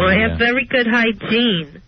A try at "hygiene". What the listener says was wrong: And not hygiene, it's hygiene. That's the accent on the wrong syllable.